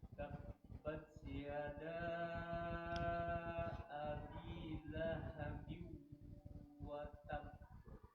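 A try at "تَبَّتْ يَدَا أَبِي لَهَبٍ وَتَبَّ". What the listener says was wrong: itu nggak masuk hidung itu, nggak ada gunanya itu, masih lahabiu, lahabiu. Nah, biu masukkan ke rongga hidung.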